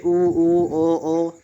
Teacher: तो आप इनको कह के देखेंगे तो आपका मुंह गोल हो जाएगा तो इन्हे कहते हैं वृत्त मुखी